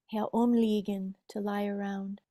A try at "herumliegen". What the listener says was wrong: Herumliegen, there's no need for a pause.